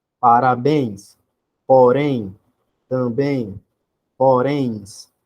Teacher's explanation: O som mais forte vai ser a última, então é a oxítona.